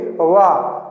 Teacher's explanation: ओठ जब वा बोलेंगे वाह, तो ओठ से तो बोल रहे हैं लेकिन ओठ आपस में मिल नहीं रहे हैं, तो इसीलिए जो है ये स्पर्श नहीं करते हैं, ठीक है ना। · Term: अर्ध स्वर